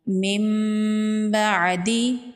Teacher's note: نون کو میم میں بدلیں گے اور یہاں پر غنہ کریں گے۔ من بعدی، من بعدی نہیں پڑھیں گے۔ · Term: اقلاب